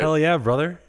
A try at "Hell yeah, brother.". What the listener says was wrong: You said that typically that phrase has a different intonation when it's said, you know? Hell yeah, brother.